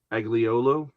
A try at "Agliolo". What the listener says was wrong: Aiolo. Aiolo. Don't even pronounce the G, and the Y, and the I is pronounced like a Y. So, why have the G? It's just these silent letters.